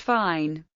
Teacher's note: F, voiceless labiodental fricative, as in English fine